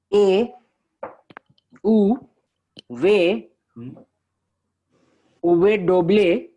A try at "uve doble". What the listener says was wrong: There is no D sound.